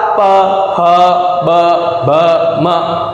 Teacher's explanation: ये होठ जब चिपकेंगे तभी ब का उच्चारण आएगा बाहर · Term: प वर्ग